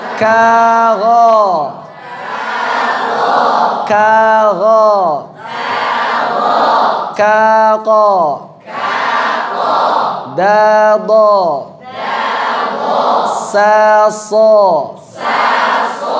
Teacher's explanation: Coba dilatih berhadap-hadapan agar melatih supaya ketebalan huruf-huruf isti'la kita itu tidak disebabkan dengan monyongnya bibir, tapi disebabkan pangkal lidah yang naik ke langit-langit